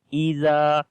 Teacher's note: Here is alif madda. Alif is coming after fatha sign, which is on the zal. We long here إِذَا, and also zal we read in soft sound.